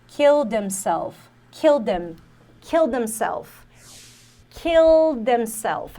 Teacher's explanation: Se eu não me engano, ela não pronuncia esse H, então é killed himself.